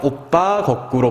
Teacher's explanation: 두 모음 사이에서 된소리가 나는 경우입니다.